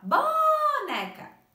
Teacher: Perceberam que o né a prof pronunciou com mais tempo e também com mais intensidade? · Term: sílaba tônica